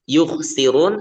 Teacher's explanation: sin itu tipis ya, jangan terbaca tebal. Jadi caranya ketika membaca huruf sin itu ya sedikit melebar untuk bibirnya ya, mulutnya.